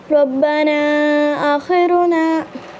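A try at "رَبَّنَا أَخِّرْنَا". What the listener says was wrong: आखिर नहीं बेटे, शद की वजह से सख्ती से पढ़ें खा को।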